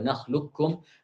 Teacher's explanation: lisan langsung berpindah sekaligus, kata beliau, serentak dari lam langsung ke kaf. Jadi alam nakhluqukum, tidak ada sisa tebal dari qaf itu tidak ada. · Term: idgham total